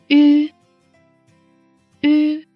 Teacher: our lips are round and close to each other. The tip of the tongue abuts the lower gums, the front of the tongue bulges, and the vocal cords tremble.